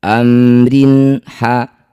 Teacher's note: baca jelas bunyi mim tidak usah dengung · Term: izhar syafawi